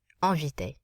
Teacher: There's no E following it. We nasalize the vowel in front of the N.